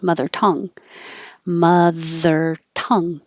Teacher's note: because we usually emphasize adjectives but in this case i think i almost hear it as a unit with the stress on tongue